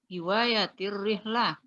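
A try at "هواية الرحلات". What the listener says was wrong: Hakada. Rihlat. Maddi harfil lam. Maddi harfil lam. Hafal. Muddi harfil lam. Muddi harfil lam. Panjangkan huruf lamnya.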